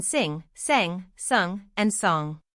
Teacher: One especially important feature was ablaut, a pattern of vowel alternation inside related words.